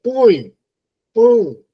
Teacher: Quando você diz põe, pão, aí esse A já está nasal